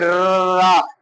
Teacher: तो जीभ क्या करती है, आगे से थोड़ी सी हल्की सी मुड़ती भी है, और मुड़ने का मतलब लुंठित होती है